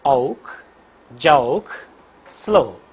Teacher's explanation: So during the articulation of this vowel, for the first elements the lips are unrounded, and for the second element lips are in rounded position. · the glide movement begins from a position in between center half close and half open and moves in the direction of RPU. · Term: diphthong O